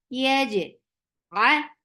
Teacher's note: For fatha, open your jaws. Attach with jim. Jim will get sifa of qalqala.